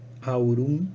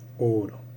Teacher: Bueno, acá lo que vemos, si repasamos el triángulo, tenemos la A, la O, la U. Entonces, la A es atraída por la U del diptongo, pero no tanto para transformarse en una U, sino que queda a mitad de camino y se simplifica en una O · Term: monoptongación